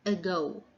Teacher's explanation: sound if it is unstressed like in the first word ago the stress falls on the second syllable therefore the letter a here can be sound like uh or the schwa